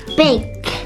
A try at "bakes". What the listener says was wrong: with an s. So there's an s. How do you read it with an s? Bakes.